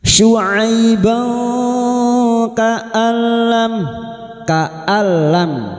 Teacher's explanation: Masuk tanpa mendengung. Masuk pada huruf lam tanpa mendengung. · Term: Idgham bila gunah